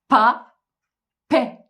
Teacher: dudaklarım gergin bir yapı aldı ve e sert bir şekilde açılıp kapandı